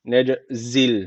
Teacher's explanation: cim harfi cezim almış. Kalkale tecviti var. Birazcık vurguluyoruz.